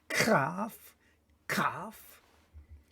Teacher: Kaf, which also is a little bit more guttural sound